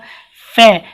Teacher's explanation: फे का जो उच्चारण स्थान होता है दंतोष्ठ मतलब दांत और ओष्ठ से मिलकर बनता है, मैंने बताया था मतलब आपके ओंठ बनेंगे और दांत एक दूसरे से टच भी करेंगे, तो option number A is the right answer.